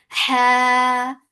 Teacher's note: Ha, 2 counts long, and ha should be from your throat